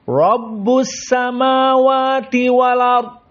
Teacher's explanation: Ro-nya at-tafkhim. Ro as-sakinah sebelumnya fathah tafkhim.